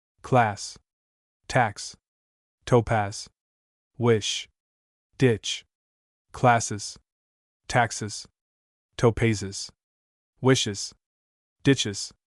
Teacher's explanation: These words end with a sound so much like that of s that we cannot pronounce the plural easily without making another syllable.